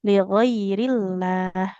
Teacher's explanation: kalau lafaz Allah didahului kasrah lamnya tipis